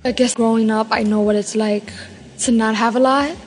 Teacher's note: New York Latino English speakers have a particularly light L, you can hear that in this native speaker clip.